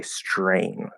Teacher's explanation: to use the t plus r consonant uh optional Rule and change the T into a CH